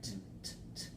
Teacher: This is voiceless. So no vocal vibration here. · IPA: /t/